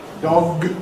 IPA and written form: dɒg (dog)